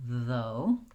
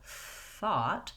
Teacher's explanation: My voice is on in though, versus, for example, thought. My voice is off for that TH. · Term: voiced TH sound